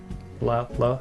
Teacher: It's like halfway between an R and an L, and kind of like a D in there a little bit sometimes too. Yeah, like when we pronounce rarirurero, the tip of your tongue touches the back of your higher teeth